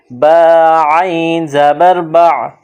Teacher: اگلا حرف دیکھیے، یہاں با ہے، با پر زبر ہے، اس کے بعد عین، گلے سے زور لگا کر عین کو ادا کرتے ہیں۔ عین پر جزم ہے، جزم ملانے کے لیے آتا ہے تو با اور عین کو آپس میں ملائیں گے، با عین زبر با۔